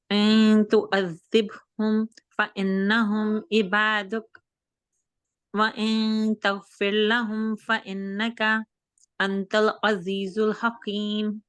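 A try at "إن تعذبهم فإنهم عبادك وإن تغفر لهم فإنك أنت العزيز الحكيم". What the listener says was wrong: Okay لام کو ٹھیک کریں پھر سے.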